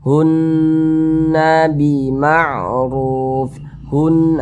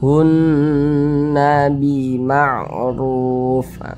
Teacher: Cara bacanya digunnahkan. Suaranya kita tahan, kita panjangkan sejenak. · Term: gunnah musyad dadah